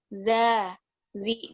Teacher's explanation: Ingat, zal itu dia sifatnya jahar, bukan hamas. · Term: huruf zal